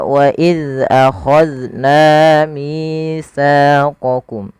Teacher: pada lafal na, kemudian mi, sa, ketiga kata ini wajib dipanjangkan 2 harakat. Maka wa iz akhadna mitsaqakum. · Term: mad tabi'i